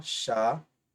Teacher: Observe que aqui tem um ditongo aberto e ele é tônico. Por isso ele vai levar acento.